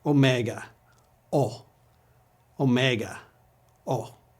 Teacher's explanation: a vowel it's the large version the mega version of Omicron it always has had the same sound as Omicron but originally it was pronounced for a longer duration